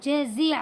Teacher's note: جیم زبر جا، زا زیر زی جزی، عین زبر ع، جزیع جزیع. عین کو حلق سے نکالنا ہے